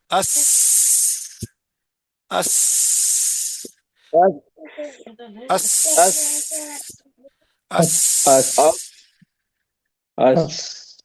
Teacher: سین میں باریک اور سیٹی والی. اس اس اس اس اس اس جی اس جیسے مکہ لگا کے ہوا نکال دیا ہے.